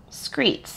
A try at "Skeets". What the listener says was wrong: Well, there's no R, so you're... Skeets,